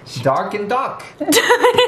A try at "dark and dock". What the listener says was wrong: Why does it sound like duck?